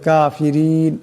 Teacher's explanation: ইন্নাল্লাহা এমন করে লাব্বুল কাফিরিন কাফিরিন এখানে রা নিচে জের আছে এই র নিচে জের থাকার কারণে এই রাকে পাতলা আওয়াজে পড়তে হবে